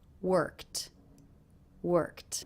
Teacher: the ED ending here is pronounced as a tea sound that's because the sound before the K is unvoiced so this ending will also be unvoiced worked worked and I